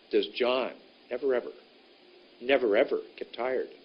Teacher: let's make does very short never very short and get very short